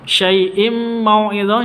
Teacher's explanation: syai' sifat lin, lentur, lemes ya, tidak boleh disentak. Syai'im mau'izah, im tanwin bertemu dengan mim, masuk ke mimnya, cara bacanya masuk ke mim.